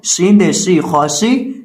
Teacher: شین کا مخرج ہے زبان کا درمیان، جب اوپر مد مقابل تالو سے لگتا ہے تو شین ادا ہوتا ہے۔